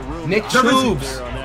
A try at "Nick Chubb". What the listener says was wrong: Nick Chubbs does not exist. His name is Nick Chubb. Stop calling him Nick Chubbs.